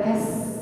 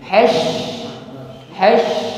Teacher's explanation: Yang titik 3 shin tafasyi, meluas anginnya.